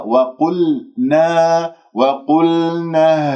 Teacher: القاف مفخمة مرتبة ثالثة لأنها مضمومة، لا تسحب ضمة القاف إلى اللام، تقول وقل، نطقت اللام وأنت عندك الشفاه مضمومة تأثرا بضمة القاف، يجب أن تكون ساكنة ومن غير الشفاه بالوضع الطبيعي.